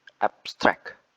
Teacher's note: So it will say like abstract. But when you say the word abstract as a verb, the stress is placed at the second syllable